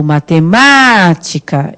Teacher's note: É o má que eu fico mais tempo pronunciando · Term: sílaba tônica